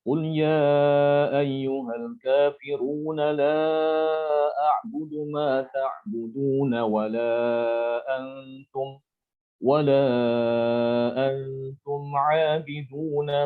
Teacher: Ketika kita sambung itu menjadi mad tabi'i, ya. Kalau disambung mad tabi'i. Tapi kalau berhenti ya di akhir ayat ini, al-kafirun ini, kata al-kafirun dia menjadi mad arid sukun, ya. Ketika disambung harus dibaca 2 harokat saja.